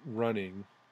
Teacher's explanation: in the word running the first syllable run is stress and the second syllable is not